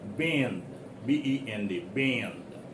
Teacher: wherever you see the letter N occurs in the uh word make it a little nasal pronounce it the word is coming out of your nose